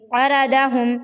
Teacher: ثم میں ثم اس طرح سے نہیں پڑھیں گے۔ عرضہم، عین حلق کے درمیان سے ادا ہوگا